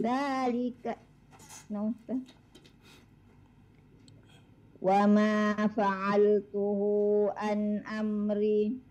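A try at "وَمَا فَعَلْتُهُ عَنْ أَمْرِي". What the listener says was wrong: Huruf ain an amri.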